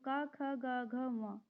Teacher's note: जिन व्यंजनों के उच्चारण कंठ से होता है इनके उच्चारण में जीभ का पश्च भाग कोमल तालू को स्पर्श करता है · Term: कंठ व्यंजन, कंठ्य व्यंजन